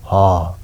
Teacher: अब अति कण्ठ्यमा एउटा मात्रै वर्ण पर्छ त्यो हो ह यानि कि घाँटीभित्रबाट ह उच्चारण हुन्छ हैन अति कण्ठ्य भित्री घाँटीबाट।